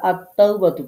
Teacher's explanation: আলিফ লাম যুক্ত হলে আমরা লামটাকে পড়ছি না এবং এটা যদি আয়াতের মাঝেও আসে তাও দেখেন হিয়াত তাওবাতু পড়ছি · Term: হরফে শামসিয়া